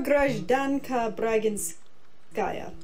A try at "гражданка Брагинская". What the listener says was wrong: Not Брагинская, Брагинская, Брагинская. It's very rare that you have your family name change stresses between genders. Гражданин Брагинский, гражданка Брагинская.